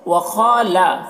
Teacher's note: خا کو پر پڑھیں گے، حروف مستعلیہ میں سے ہے